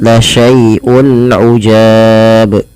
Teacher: Kemudian berlafal ujab, di sini ada bacaan izhar halqi, yaitu adanya dhammatain atau tanwin ya bertemu dengan huruf ain, maka di sini harus diperjelas bunyi suara unnya ketika ia bertemu dengan huruf-huruf izhar